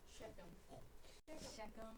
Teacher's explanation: Now this is where it breaks down. The CH is not pronounced ch in this case. It's pronounced k.